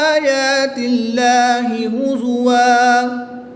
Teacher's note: زبر کی تنوین کو وقف میں الف مدہ سے بدل کر پڑھیں گے۔